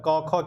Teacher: कवर्ग जितना है सब कंठ से बोले जाते हैं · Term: कंठ ध्वनियाँ